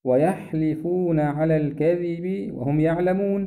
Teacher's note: كلمة الكذب في حرف الذال، هذا الحرف تخرج معه طرف اللسان